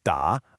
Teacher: For the third da, a distinct check mark shape down then up.